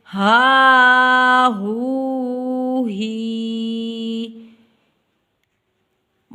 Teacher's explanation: ہا زبر الف ہا، ہا پیش واو ہو، ہا زیر یا ہی، ہا ہو ہی۔ واو اور ہا دونوں مد اصلی ہے، ان کو ایک الف کی مقدار میں لمبا کر کے ہم ادا کریں